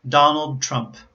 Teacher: So the L in Donald Trump happens at the end of a syllable in a consonant cluster. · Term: dark